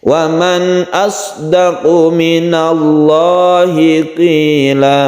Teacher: Iwad artinya ganti, apanya yang diganti, yaitu tanwin fathah sudah diganti menjadi mad atau dipanjangkan satu alif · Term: mad iwad